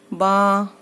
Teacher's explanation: बा दोनों होठों के गीले हिस्से से